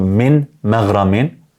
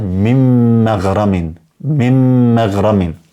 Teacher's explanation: kur të vini pas një mimit që është me sukun, me një mim tjetër që është me fetha, atëherë e dini se është el-idgham el-shafawi dhe duhet të shkrihet totalisht. Do të thonë nuk lejohet të lexohet për shembull min maghramin, porse mim maghramin.